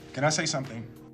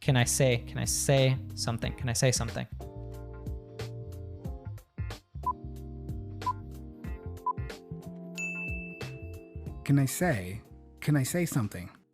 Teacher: Which is how most people learn how to say it in school, right? But he reduces can to kin.